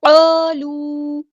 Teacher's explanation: کالو نہیں پڑھنا، قالو الف مد آ گیا ہے تو مد اصلی کریں گے، ایک الف کے برابر لمبا کریں گے، اس الف کو پورا ادا کرنا ہے، ٹھیک ہے۔